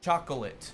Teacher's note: hay dialectos en que no echan la segunda O.